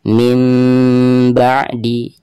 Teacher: ada nun sukun lalu di depannya ada huruf iqlab ba ya maka suara nun sukun tersebut itu harus dirubah menjadi suara mim sukun